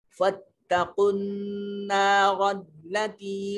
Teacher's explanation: نون مشدد ہے، اس کو ناک میں لے جا کر نتنوں میں گنگنانے کی کوشش کریں گے